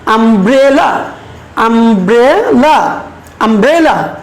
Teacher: এই যে ব্রে, এখানে আমরা একটু প্রেসার দেবো, এখানে আমরা একটু জোর দিয়ে বলবো। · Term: স্ট্রেস